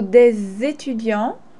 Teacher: Des étudiants has a special way of being pronounced because des ends with an S. Étudiant starts with the vowel. So des étudiants, you make the liaison. You link the S and the E.